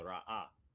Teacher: Like you say, like when you have the resh, aleph, hey, there's a glottal stop there, right? So the aleph represents a glottal stop, and then the ha is vocalized, right?